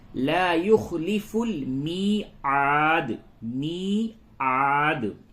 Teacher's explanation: می یا مدہ ہے، اس کو تھوڑا سا کھینچیں گے،